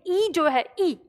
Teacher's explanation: ई ये तालु से बोला जाता है, यानी इसका उच्चारण स्थान तालु माना गया है